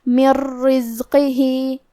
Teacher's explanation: کلمت رزق ہی راء حروف الادغام بغیر غنہ میں سے ہے، اور ادغام کا معنی ہے حرف کو حرف میں داخل کرنا، لہذا ہم یہ نون کو راء میں ملا کے بغیر غنہ سے لیکن تشدید کے ساتھ یہ حکم کو ادا کریں گے · حرف القاف کو ہم موٹی آواز میں پڑھیں گے